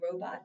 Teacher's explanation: Don't forget to accent the first syllable